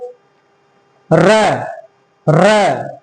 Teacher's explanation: लुंठित माने लुढ़कना। जब आप र का उच्चारण करते हैं तो आपकी जीवा मूर्धा से टकरा करके लुढ़क जाती है। · र बोलते हैं तो जीभ आपकी आगे वाइब्रेट होती है। इसका मतलब जब र बोलते हैं ना तो जीभ आपकी ऊपर मुर्दा से टकरा के तुरंत आप वो वापस आ जाती है।